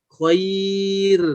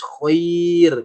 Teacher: karena sebelumnya ya, maka ro di sini jadi tipis